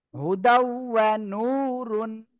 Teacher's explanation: তানবিনের পরে ইদগামে বা গুণার অক্ষর ওয়াও আসছে, কি করবেন? গুন্নার সাথে মিলিয়ে পড়তে হবে।